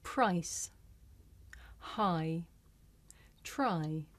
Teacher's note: this is a diff thong a double vowel sound the shape the mouth makes changes from the beginning of the sound to the end